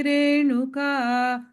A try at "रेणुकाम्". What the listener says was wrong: Him in the first line, last word, Renukam. There's a im there, okay? I didn't hear. I heard Renuka, Renukam, im.